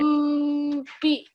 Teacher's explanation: it's very easy, in fact, to hold onto the meme sound and then let go when you say B. So you wouldn't say hum B.